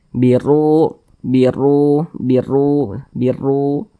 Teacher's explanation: huruf ro yang memiliki tanda baca domah dibaca tebal dibaca tkhim sehingga pangkali dan kita naik terangkat ke atas huruf